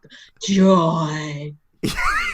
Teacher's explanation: joy is a joy in and of itself, because it's so breathy